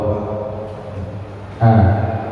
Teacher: huruf yang dibaca A itu makhrajnya di tenggorokan bagian bawah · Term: hamzah